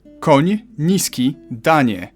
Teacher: You start with an N and soften it to ni.